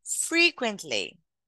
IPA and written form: ˈfriː.kwənt.li (frequently)